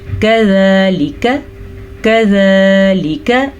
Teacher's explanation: کذالک کاف کو نرمی سے پڑھنا ہے. موٹا قاف مت بنا دیجیے گا اس کو. موٹا قاف جو ہے وہ پر پڑھا جاتا ہے، یہ نرمی سے پڑھا جاتا ہے.